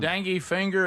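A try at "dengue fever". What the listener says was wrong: It's not dengue finger. I think you said finger.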